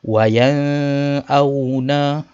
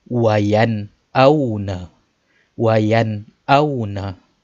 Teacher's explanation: Kita tak baca dengung ataupun panjang. Kita baca secara jelas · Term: izhar halqi